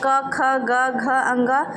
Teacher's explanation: क ख ग घ अंग सब कंठ से बोले जाते हैं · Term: क वर्ग